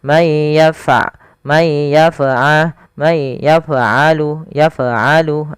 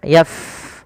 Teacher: pada huruf fa jangan memantul, jangan may yaf'alu.